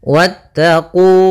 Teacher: wawnya langsung ke huruf ta dan wawnya tidak dipanjangkan